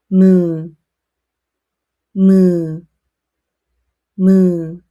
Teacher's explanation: Let air flow through your nose. It makes a soft humming sound. It is similar to the English M.